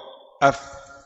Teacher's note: Fa ujung gigi di atas bertemu bibir bawah